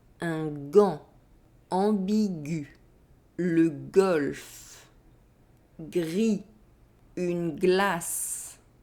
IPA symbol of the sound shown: g